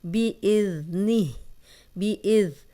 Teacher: یہاں زال نرم پڑھیں گے, سیٹی کی آواز نہیں آئے گی